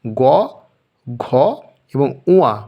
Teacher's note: ক বর্গের গ, ঘ এবং ঙ এই 3টি বর্ণ অর্থাৎ বর্গের হচ্ছে তৃতীয়, চতুর্থ, পঞ্চম হলো ঘোষ ধ্বনি